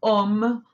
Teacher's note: ese diptongo a u al unirlos este terminan formando la o si es como una reducción por eso se dice el sonido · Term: sonido om